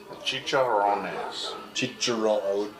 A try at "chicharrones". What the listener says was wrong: Chicharrones. Gotta roll your R's. Chicharrones. You could just say chicharrones. But not chichirones.